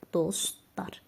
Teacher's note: Burada artıq t düşəcək.